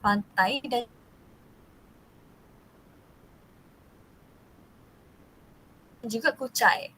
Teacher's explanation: Diftong I melibatkan vokal depan rendah dan vokal depan tinggi.